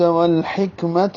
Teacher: والحکمت میں ہا وسط حلق سے، کاف پہ ہمس ہے، تا مربوطہ ہے، جلدی سے پڑھیں گے